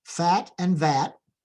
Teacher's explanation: again there's friction at the teeth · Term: fricatives